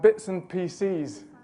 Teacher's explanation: this minimal pair actually has a stress difference as well pieces wouldn't have the stress on the second syllable like pcs does